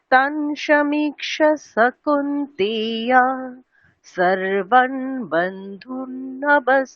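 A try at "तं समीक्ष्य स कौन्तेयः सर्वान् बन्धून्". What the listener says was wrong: আচ্ছা, বিসর্গের প্রোনাউন্সিয়েশনটা করতে হবে ম্যাডাম, ঠিক আছে? কৌন্তেয়াহা, ঠিক বিসর্গের উচ্চারণটা কেমন হয়?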